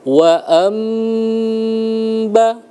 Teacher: nun bertemu dengan ba iqlab di tekan ditahan selama dua harakat wa amba dengan mulut tertutup.